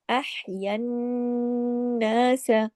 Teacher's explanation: दोबारा नून गुन्ना हुआ, तशदीद की वजह से डबल गुन्ना है, बड़ा गुन्ना हुआ, अकमल गुन्ना हुआ, आवाज को नाक में देर तक छुपाया।